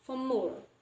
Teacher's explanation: We don't pronounce the R, but we change it as M sound, for more. So since it joins the last word, so it can be called as regressive assimilation.